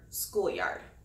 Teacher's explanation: A spondee is two stressed syllables in a row, like the word schoolyard. Schoolyard is a compound word, and both of the syllables in the word are stressed.